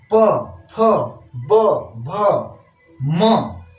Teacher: ओठ को टक्कर होने से आवाज निकल जाती है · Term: ओष्ठ्य